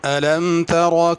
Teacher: علم تر میں را کو پر کرنا ہے، ترا نہیں پڑھنا